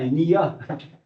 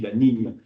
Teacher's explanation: Et oui, que nous on dit ni, la niña, mais c'est pas un nia, une fille, la niña, c'est ni, c'est un N palatisé, palatal, où l'air passe par le palais.